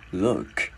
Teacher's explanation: Chữ L mình gắn vào chữ lua và chữ K mình sẽ bật hơi ra